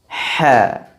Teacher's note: Karena pada pengucapan huruf H, ruangan atau ruang antara permukaan lidah dengan langit-langit atas terbuka, tidak tertutup. Maka keluar pula suara yang tipis, sama dengan sifat sebelumnya tadi. · Karena pada pengucapan huruf H, pangkal lidahnya tidak terangkat. Maka keluarlah suara yang tipis. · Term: infitah, istifal